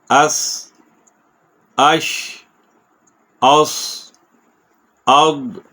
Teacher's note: اس زبان سین کے مخرج پہ گئی، لگی اور وہیں پہ رک گئی، پھر اوپر نہیں اٹھے گی